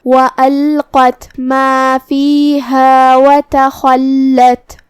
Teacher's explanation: لام پہ تشدید ہے تو 2 حرف کے برابر ہم لام کو پڑھیں گے۔ آخر میں تا کو ہم ہمزے سے ادا کریں گے۔